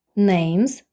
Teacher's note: S після дзвінкої м вже Де звук з